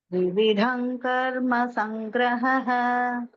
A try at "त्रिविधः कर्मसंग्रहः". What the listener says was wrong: त्रिविध संकर्म संग्रह, not त्रिविधम, त्रिविध संग कर्म संग्रह. I heard it as त्रिविधम.